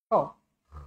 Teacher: macam kita sakit tekak, macam ada kahak kan. Kha, pasti kan ada getaran tu. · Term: huruf kha